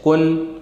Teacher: میں تو نون ہوتا ہی ہے، جیسے کاف نون پیش کن، تو اس نون کو ظاہر کر کے پڑھنا ہے بغیر گنہ کے